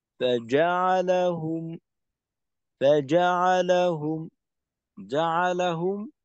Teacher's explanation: জাআলাহুম একসাথে, এখানে এর মাঝে কোনো স্পেস আনা যাবে না। জাআলাহুম, ফাজাআলাহুম, এইভাবে এখানে কিন্তু ফা আলাদা, যতটা একটু আহ, আওয়াজের পার্থক্য রাখার চেষ্টা করা, কিন্তু জাআলাহুম এখানে কোনো আলাদাভাবে যেন দূরত্ব তৈরি না হয় এই শব্দের মাঝে।